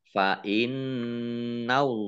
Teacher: Bi ayatillahi fa innallaha nun tasdid ya, dibaca gunnah atau mendengung ditahan 2 harokat.